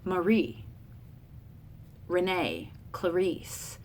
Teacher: the iamb of unstressed, stressed would be like Marie, Renee, Clarice.